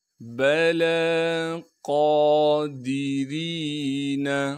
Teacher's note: لام کے بعد یا موجود ہے اسے ہم نہیں پڑھیں گے، قاف کو موٹا کر کے پڑھیں گے اور قاف پر کڑا زبر ہونے کی وجہ سے قاف کو ایک الف کے مقدار کھینچیں گے ، دال کو بغیر کھینچے پڑھنا ہے، را کے نیچے زیر